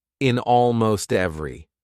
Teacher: consonant, vowel, consonant, vowel. That's so easy to link. You've got to link those together.